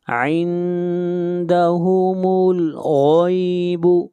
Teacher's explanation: غین کو موٹا پڑھیں گے، غین حروف مستعلیہ میں سے ہے